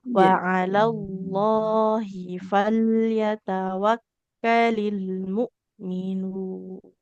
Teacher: huruf H-nya enggak boleh dipanjangkan ya, tidak ada yanya